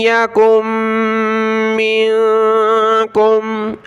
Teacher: یکم منکم، حمزہ کو یا کے ساتھ ملائیں گے، نون ساکن کی وجہ سے ناک میں آواز پیدا کریں گے